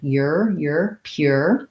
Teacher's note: And so we say it like pure. So there's a glide. It's like a y sound, you're pure.